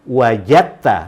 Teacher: Ini dal ini kalau diikuti oleh ta, ya, makhraj dal itu berdekatan dengan makhraj ta, dal ta, ya, dal ta ujung lidah, maka dal ini harus diasimilasikan ke ta. Makanya wajada plus ta itu, wajada plus ta itu dilafazkan wajadta, masukkan dal ke ta.